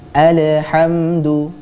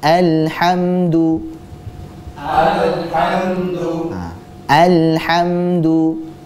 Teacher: secara tidak sadar dia mengkolkolahkan huruf lam yang sebenarnya bukan huruf qalqalah